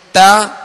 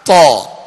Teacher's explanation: تا کو باریک پڑھیں گے اور تو کو پر یعنی موٹا پڑھیں گے